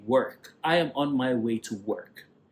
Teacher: Now the American way is to sound the R. So they say work.